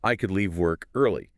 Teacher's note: We already dropped the L in could, but in natural speech, the vowel gets totally flattened out too. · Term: weak forms